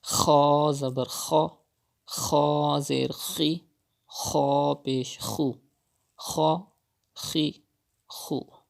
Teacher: You have to read kha with thicker voice because kha is from Mustalia letters.